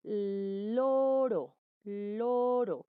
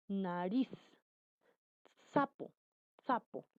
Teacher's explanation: el ápice o la punta de la lengua se desplaza hacia la zona alveolar, la zona superior de los dientes superiores. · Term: alveolares